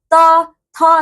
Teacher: जैसे देखो त, थ, जब आप बोलोगे तो दांत स्पर्श होते ही होता। कुछ भी कर लो आप बिना दांतों को स्पर्श करे आप त का उच्चारण नहीं कर सकते।